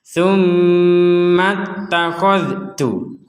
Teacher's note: Huruf dalnya disempurnakan dulu, sekali lagi, baru kita mengucapkan huruf ta.